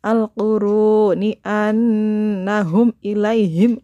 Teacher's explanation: Nun nya ditekan dan didengungkan selama 2 harokat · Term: guna musyaddadah